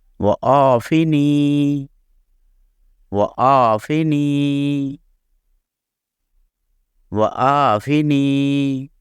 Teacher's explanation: عین کی آواز بھی جو ہے وہ حمزہ یا الف سے مختلف ہے، اس کی آواز جو ہے گلے کو اندر کی طرف پچکا کے تھر تھراہٹ سے پیدا ہوتی ہے